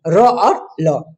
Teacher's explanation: जैसे देखिए, जहां जीभ दांतों की जड़ मसूरों का स्पर्श करती है, यानी जब जीभ जो है दांतों की जड़ या मसूरे को स्पर्श करती है, तब जो ध्वनि निकलती है वो ध्वनि का उच्चारण स्थान दंतमूल कहलाता है। · र और ल का उच्चारण स्थान हो गया दंतमूल या मसूरे।